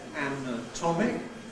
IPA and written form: ˌænəˈtɒmɪk (anatomic)